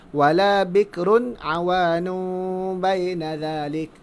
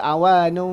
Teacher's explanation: Jadi dia mesti dengung dan dalam keadaan yang fasihnya di antara dua bibir kita ni ada sedikit ruang, tapi tak besar pun. Seumpama kita letak sehelai kertas. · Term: iqlab